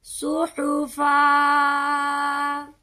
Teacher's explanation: دیکھیں اس پر دو زبر اور ساتھ الف آ گیا ہے. جب ہم اس پر وقف کریں گے تو ایک زبر کو ادا کریں گے، ایک الف کے برابر یہ لمبا ہوگا